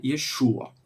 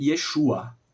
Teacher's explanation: Ele acaba com um som gutural, ó, Yeshua, e tem o som de sh